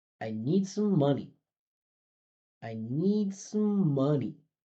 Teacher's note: you're gonna hear need go up with a little bit of pitch, come back down for the reduction, and then go way up for the most important part.